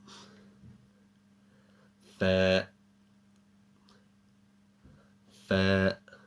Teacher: The letter Fa comes when the bottom edge of the upper front teeth meet the bottom lips, similar to the English word farm.